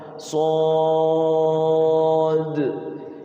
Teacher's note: Sodnya 6 harokat disertai dengan qalqalah.